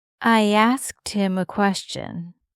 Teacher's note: Like you really just connect those sounds. >> It's so fast. That skt sound. Just really quick.